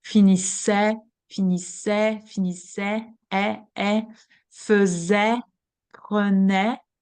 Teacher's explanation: the sound eh, with the mouth widely open